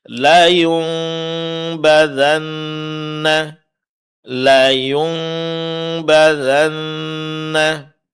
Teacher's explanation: nun di sini diganti menjadi mim sukun, mimnya didengungkan dan disamarkan dengan merenggangkan sedikit antara dua bibir. Ini yang disebut dengan iqlab.